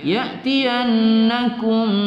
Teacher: Idgham mislaini bi gunnah, ya, bertemu dua huruf yang sama yang kita dengungkan. Ya'tiyannakum, ya, ya'tiyannakum mim sukun bertemu mim, ya, kita baca idgham mimi pada hukum mim.